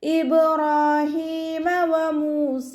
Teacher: വാവ് ചരിക്കുമ്പോൾ ചുണ്ടുകളൊന്ന് circle ചെയ്ത് കൊടുക്കുക. മീമിൻ്റെ കൂടെ വാവ് മദ് വന്നു, 2 കൗണ്ട് നീട്ടിക്കൊടുക്കുക.